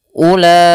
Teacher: huruf bacaan mad wajib muttasil ini wajib dibaca dengan panjang 4 harokat untuk riwayat Imam Hafiz yang masyhur, ataupun ada yang mengatakan 5 harokat.